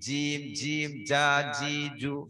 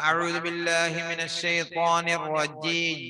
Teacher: നാവിന്റെ നടുകൊണ്ട് അണ്ണാക്കിലേക്ക് ചേർത്ത് പറയുന്ന അക്ഷരമാണ് ജ